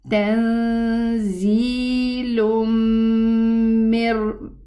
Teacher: I pronounce the first dhamma, and then I merge the second dhamma, which represents the Noon Sukun, into the meme. There is a shadda here, so there is a ghunna.